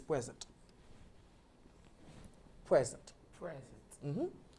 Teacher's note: When it's a noun, the stress falls in the first syllable, which is present.